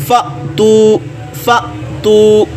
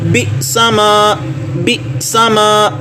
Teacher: جب بھی حمزہ ساکن ہوگا وہاں پہ جھٹکا لگے گا